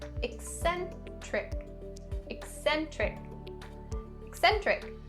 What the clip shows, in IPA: ɪk-ˈsen-trɪk